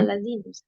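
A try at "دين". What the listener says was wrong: Din itu nggak ada titiknya kan.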